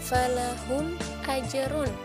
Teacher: hukum bacaannya adalah izhar syafawi atau dibaca jelas, yaitu karena ada huruf mim sukun bertemu dengan huruf alif.